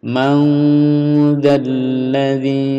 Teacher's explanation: nun bunyi nun disamarkan ke zal. Man dzalladzi, ini tasdidnya ditahan ya. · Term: ikhfa